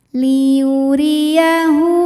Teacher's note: h damirnya kita panjangkan dua harakat